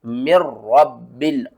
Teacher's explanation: यहाँ पर एक कायदा मैं आपको समझा दूं कि इसको मीम नून रा जेर नहीं पढ़ने, आपने पढ़ना है मीम रा जेर मिर, रा बा जबर रब बा लाम जेर बिल, मिर रब्बिल, और बगैर गुन्ने के